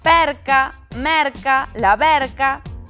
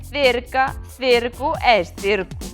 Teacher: Se se mete un R polo medio, a cousa tende a ser máis aberta.